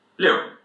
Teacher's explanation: Fourth tone, dropping from top to bottom.